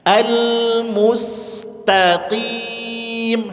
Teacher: Taknya tipis, qafnya tebal lagi.